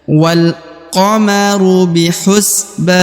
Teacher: Jadi dipanjangkan huruf ba-nya ya, karena akan wakof atau berhenti di ujung ayat ini ya. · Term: dibaca panjang